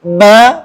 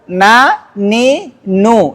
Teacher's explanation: Artinya ada suara dengung menyertai huruf mim dan nun ketika dia ber harakat.